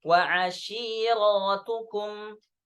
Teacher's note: Nah, zada alifan ba'da ra bil jam'. Jadi dengan tambahan alif, ya, setelah huruf ra, maka dibaca panjang